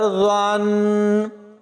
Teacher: اور اس بات کا خاص خیال رکھنا ہے کہ ضا کی جگہ زا نہ پڑھا جائے، ضا کی آواز بغیر سیٹی کے نکلے گی، اس لیے یہاں پر ضا پڑھا جائے گا، اور ضا کو نون کے ساتھ ملائیں گے تو یہاں پر غنہ ہوگا۔ اور ناظرین اگر ہم یہاں پر وقف کرتے ہیں تو نون کے نیچے اس زیر کو نہیں پڑھنا، اور اگر وقف نہیں کرنا تو زیر کے ساتھ آگے ملائیں گے۔